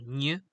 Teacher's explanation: the back of the tongue is located on the hard palate itself